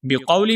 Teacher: بقولی میں جو قاف ہے، اس قاف کو بھی ہم موٹا کر کے پڑھیں گے